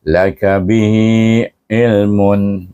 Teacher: Jadi bacaannya sama juga maksilah qasirah bihi dipanjangkan bunyi hi dua harakat